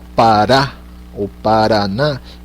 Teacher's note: É uma batidinha da língua no céu da boca ali, Rá, Rá, e daí você solta, né?